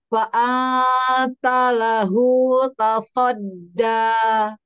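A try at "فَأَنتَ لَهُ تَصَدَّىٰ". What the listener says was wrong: Baik, fa-nya jangan ikhtilas. Fa'a, selesai. Fa satu harokat.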